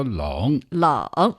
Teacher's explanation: third tone meaning down and up. Down and up.